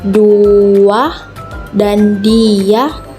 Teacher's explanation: bunyi pelancar W dan Y meskipun dilafalkan tetapi tidak ditulis